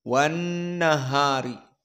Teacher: Dan nun dalam keadaan musyaddadah, maka wujubul gunnah. wan keluar dari hidung.